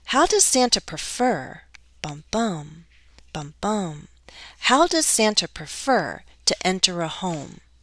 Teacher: i often use that fall rise intonation to show that i'm not quite done yet